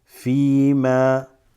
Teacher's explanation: Make sure you stretch that fa just a teeny bit because there's a ya with a sukun here.